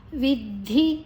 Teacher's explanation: ಧಿ ಮಹಾಪ್ರಾಣ ದ ದ ಅಲ್ಪಪ್ರಾಣ